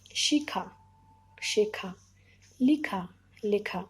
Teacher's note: পরে অ, আ, এ, ও থাকলে পূর্বের হর্ষইকারের উচ্চারণটা একার হয়ে যাবে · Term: পরাগত স্বরসঙ্গতি